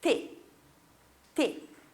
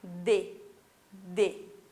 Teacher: Quando você fala o T, você joga o som para fora, T. E quando você tem o D, você tem um som mais interno. Lá, a tua língua vai lá no céu da boca, D, D.